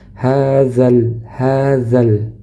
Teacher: karena setelahnya hamzah wasal maka hukumnya gugur. Jadi tidak dibaca panjang. Setelah huruf dzal langsung masuk ke huruf lam.